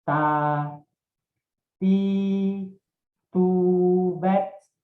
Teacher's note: Punggung ujung lidah menempel dengan pangkal 2 gigi seri muka yang atas bagian dalam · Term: huruf ta